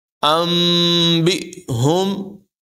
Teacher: حمزہ ساکنہ کو جھٹکے کے ساتھ ادا کیا جائے گا